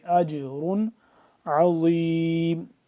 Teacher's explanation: جیم کے اوپر دیکھ لیں اب یہاں پہ ساکن ہے تو اس کو ہم کیا کریں گے، قلقلہ کریں گے